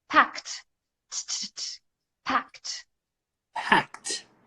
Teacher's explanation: pack ends in K. Right? And K, pack. No vibration. It's a voiceless sound.